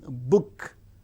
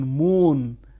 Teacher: We can see the shift bilabial. The active articulators are the two lips